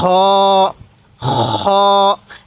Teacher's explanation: আমরা গলার যেখানে গড়গড়া করি কুলি করার সময়, এই সেই জায়গা থেকে আমরা খ এরকমভাবে উচ্চারণ করব।